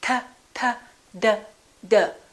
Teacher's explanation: They also have the same point of articulation because in both of those cases, the tongue is touching directly behind the teeth, T, D.